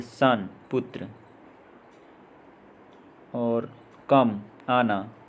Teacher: ओ का उच्चारण अ की तरह, ह्रस्व उच्चारण